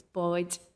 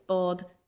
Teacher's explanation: you're alternating between your palatalized and your velarized D